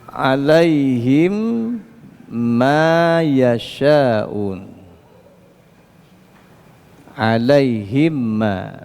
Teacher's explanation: mim sukun bertemu dengan mim berapa harkat dua harkat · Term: idgham mimi